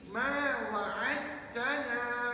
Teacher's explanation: Jangan baca sebab dah ada satu pada ta. Maka dal tu masuk dalam ta, kiranya huruf dal tu dah meninggal. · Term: Idgham mutajanisain